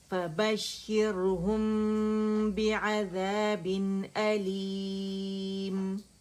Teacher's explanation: اخفاء شفوی ہو رہا ہے, ٹھیک ہے, با آ رہا ہے میم سکون کے بعد